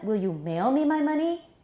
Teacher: there's a major rise on mail and then after comparatively level peace a further rise on money